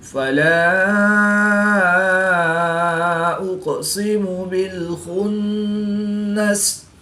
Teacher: نون مشدد ہے، تو یہاں پر ہم غنہ آنے کر کے پڑھیں گے